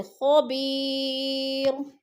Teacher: وقف کی صورت میں دو پیش نہیں پڑھے جائیں گے بلکہ را کو ساکن کر کے پڑھیں گے